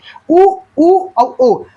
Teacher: उ एवं ओ पश्च स्वर है